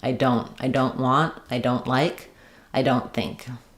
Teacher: I can stop the air for the T, but make it and not let it out. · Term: unreleased T